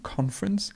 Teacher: the stress moves to the beginning